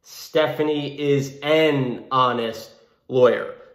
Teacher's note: it's almost like the h isn't even really there so because it begins with the sound of an o which